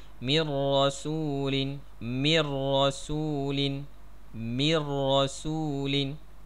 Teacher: Seolah-olah nun ni dah tak ada dah. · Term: nun bertemu dengan ra